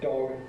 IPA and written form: dɒg (dog)